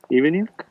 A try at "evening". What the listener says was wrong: Evening, try not to pronounce G at the end. When if the word is evening, we pronounce like eve.